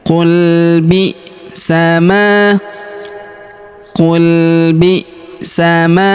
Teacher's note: Huruf ma kita panjangkan dua harakat karena terdapat alif di depannya.